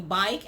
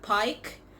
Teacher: Voicing errors, like instead of saying bike, it sounds like pike.